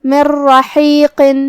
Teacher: ہم یہ نون کو را میں ملاتے ہوئے بغیر غنہ کے لیکن تشدید کے ساتھ یہ حکم کو ادا کریں گے · حرف الحا کو ہم حلق کے درمیان والے حصے سے ادا کریں گے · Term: ادغام بغیر غنہ